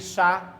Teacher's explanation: उच्चारण में गूज कंपन झंकार नहीं होती है आगे क्या है उष्म या सघर्ष व्यंजन जिसके उच्चारण में गर्म हवा निकलती है